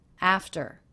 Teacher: The second syllable, very low in pitch, flat and quick.